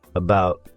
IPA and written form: əˈbaʊt (about)